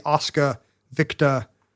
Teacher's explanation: you're supposed to get rid of the final terminal R's